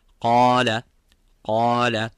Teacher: I blocked the nostrils and I blocked the nasal cavity. I did not let the air coming from there, and I realized that I'm trying to do it from there.